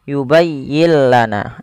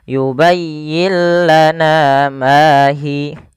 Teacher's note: Salah satunya adalah huruf lam. Maka apabila ada ada nun mati bertemu lam, suara nunnya kita hilangkan dan kita masukkan langsung kepada huruf lamnya. Sehingga yubayyillah, dan lam di sini dituliskan dengan tanda tasdid karena suaranya masuk kepada huruf lam. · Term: idgham bila gunnah